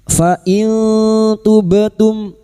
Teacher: Kita samarkan bunyi nun sukun dan mendengung selama tiga harakat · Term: ikfa hakiki